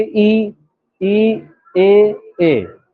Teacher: अग्रभाग एक्टिव होता है जीभ का, ये वाला भाग एक्टिव होगा। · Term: अग्रस्वर